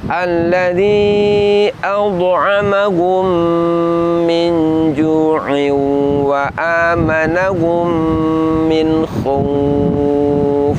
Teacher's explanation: mim sukun bertemu dengan sesama mim, di mana mim sukunnya dileburkan ke huruf mim setelahnya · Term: idgham syafawi